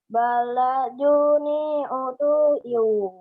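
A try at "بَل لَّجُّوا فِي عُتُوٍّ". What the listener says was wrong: Itu fi bukan nih fi. Balaju fi.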